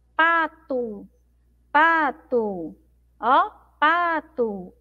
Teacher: a sílaba mais forte é o pá